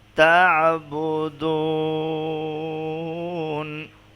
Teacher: وقف کی صورت میں اور 3 سے 4 الف کی مقدار لمبا کر پڑیں گے، کیونکہ یہاں وقف کی صورت میں مد عارض وقفی ہو جائے گی۔